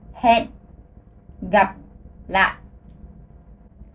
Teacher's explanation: C'est un H aspiré, c'est comme dans l'anglais